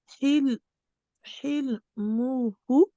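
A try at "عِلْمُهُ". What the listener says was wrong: Ilmuhu. c'est un aïn.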